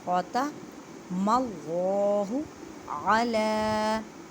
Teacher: عین کو حلق کے درمیان والے حصے سے ادا کریں اور لام کو ایک الف کی مقدار میں کھینچ کر پڑھیں کیونکہ لام کے اوپر کھڑی زبر ہے۔